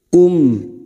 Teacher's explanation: Pada saat kita wakaf di sini maka huruf mim sukun harus terasa. Kum, bibir kita tertutup.